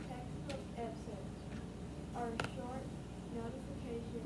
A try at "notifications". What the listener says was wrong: Not notification. Go slow. Use your finger. You're reading too fast. That's the problem. You're trying to read fast and get to the end. You can't do that. Put your finger underneath it.